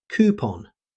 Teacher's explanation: In American English, most native speakers say coupon, using a long ooh sound. You'll also hear coupon, particularly in British English. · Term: long oo sound